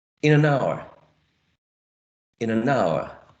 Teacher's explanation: Hour, right, would be the tonic syllable.